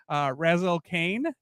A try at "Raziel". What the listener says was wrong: Hey, it's Raziel, not Razel.